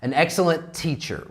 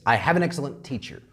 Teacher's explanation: if we have one word like excellent and then another word beginning with a T this same consonant okay we omit one of the t's an excellent teacher we don't say this T an excellent teacher